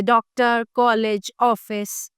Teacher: अर्धचंद्र इसका उच्चारण आ तथा ओ के मध्य की ध्वनि के रूप में होता है।